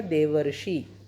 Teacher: देव plus ऋषि में, देव में अ है ऋषि में री है, अ और री मिलके अर बन गया तो ये बन गया देवर्षि।